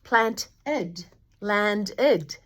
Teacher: So, we're not talking about irregular verbs, we're talking about regular ones that you add ED to. So, when a word ends with a t or a d like plant or land, we say plant ed, land ed as a syllable